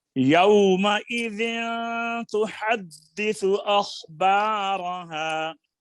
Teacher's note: جب آپ یومئذ کہا ہے نا آپ نے، تو ناک میں آواز گئی ہے. یو میں ناک میں آواز نہ جائے.